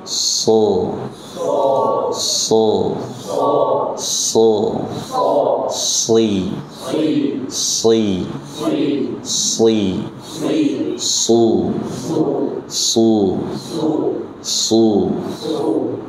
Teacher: pangkal lidah kita naikkan, ya, dan terjadi pengepungan suara yang dinamakan dengan itbaq